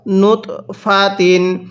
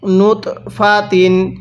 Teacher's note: এই ত এর মধ্যে আমরা ধাক্কা দিয়ে পড়বো কারণ তটি হলো কলকলার হরফ